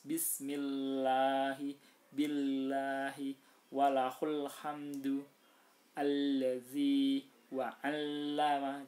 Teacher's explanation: semua lam yang tidak dalam perkataan Allah itu harus dibaca tipis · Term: lam muraqqaqah